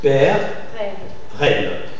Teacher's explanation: La lettre E surmontée d'un accent grave, articulation ouverte. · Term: E ouvert